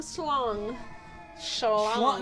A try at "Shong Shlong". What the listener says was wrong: Yeah, see, there's no L.